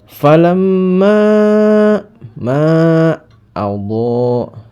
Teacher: Falamma ma Allah, ma ini ada hukum bacaan mad jaiz munfasil karena ini ada mad bertemu dengan hamzah dalam dua kata falamma sama Allah ya, maka dibaca mad jaiz munfasil panjangnya 5 atau 6 harokat.